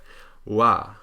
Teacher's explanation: The reason it's missing from this chart is because it's an approximant, but it's in 2 different places at once. It's the tongue is raised in the back like the velar approximant, la, but also the lips are rounded in a sort of oo shape, so you get wa. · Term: the English W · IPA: /w/, ʋ ɹ ɻ j ɰ